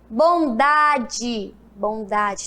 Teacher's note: Tem um som fraco, né? E quando tem um som fraco, significa que é a vogal E com som de I.